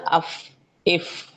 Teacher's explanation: जैसे अफ हम अफ पढ़ते हैं ना अफ इफ तो इसमें आगे के जो दांत है अगर मैं अपना बताऊं तो अफ आगे के जो दांत है वो होठों के तर वाले हिस्से से लगते हैं